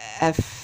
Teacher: لو وضعت صبعيني على الحنجرة عندي كده ونطقت الحروف فحسه شخص سكت، هلاقي إن مفيش أي اهتزاز بالأوتار الصوتية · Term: حروف الهمس